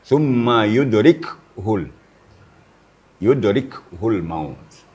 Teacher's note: Kalau kita tidak hati-hati, bisa kaf itu pakai baris. Padahal kaf itu adalah sukun.